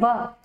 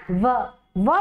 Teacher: व का दंत और ओस्ट दोनों को मिलाकर जो है बोला जाता है